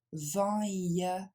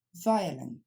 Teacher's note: On a même ici une triphtongue, c'est-à-dire une voyelle triple.